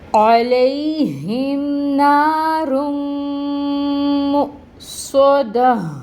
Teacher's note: عین ہے وسط حلق سے نکالیں گے، عین کی ساؤنڈ کو، عین کا مخرج وسط حلق، اور اس کے اوپر زبر کی حرکت انفتاح منہ کھول کے زبر کی حرکت کو ادا کریں گے۔